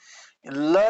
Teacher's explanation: जिस व्यंजन का उच्चारण करते समय वायु जिह्वा के दोनों बगल से बाहर निकलती है उसे पार्श्विक व्यंजन कहा जाता है।